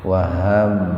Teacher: Huruf ba sukun di tengah-tengah kata. Jadi membacanya dipantulkan secara ringan. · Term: kol-kolah sugro